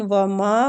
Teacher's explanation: ماں کو کھینچیں گے الف مد کی وجہ سے